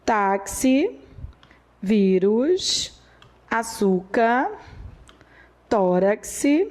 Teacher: a sílaba tônica é a penúltima